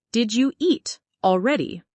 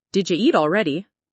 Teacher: Did you hear that change? Did you becomes did ya.